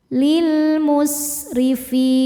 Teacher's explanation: Huruf ro dibaca secara tarqiq karena barisnya di bawah yaitu baris kasroh. Cara bacanya huruf ro ini dibaca tipis. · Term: tarqik